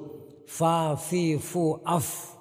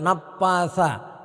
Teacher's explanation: Fa itu membacanya harus betul-betul fa, jangan sampai seperti p. Untuk membaca fa dengan benar, maka kita anginnya harus keluar ketika kita membaca fa